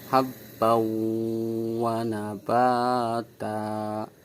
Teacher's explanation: Dan contoh tanwin fathah ten bertemu wawu habbau, jadi suara tanwinnya itu hilang dan masuk ke huruf wawu, suaranya keluar dari hidung. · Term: idgham bi ghunah